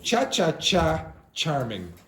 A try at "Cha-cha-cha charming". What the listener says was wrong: This is cha-cha-cha-cha, cha-cha-cha-cha-cha-cha-cha-cha-cha. It's ch, ch, stronger. Ch, ch, cha-cha-cha. Charming.